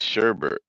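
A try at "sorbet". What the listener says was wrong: There was no H. My bad.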